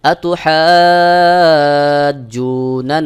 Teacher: এক আলিফের জায়গায় চার আলিফ টান দিয়ে পড়তে হয় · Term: মাদ্দে লাজিম কলমি মুসাক্কাল